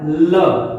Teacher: हमारी जिह्वा पहले पूरे ऊपर चली जाती है और जो साइड में बगल है, जो बगल में से हवा निकलती है और ल का उच्चारण होता है। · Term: पार्श्विक वर्ण